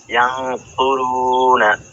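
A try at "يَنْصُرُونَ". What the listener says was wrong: জি মাশাআল্লাহ, ইয়ানসুরুনা।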